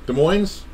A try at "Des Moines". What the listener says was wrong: It's not with an S.